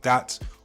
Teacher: switching out TH for a D, so a word like that will become dat